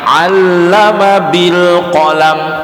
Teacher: 'allama ya, bukan allama, bukan hamzah tapi pakai ain.